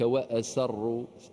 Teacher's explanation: رقق السين حتى لا تتغير الى واصر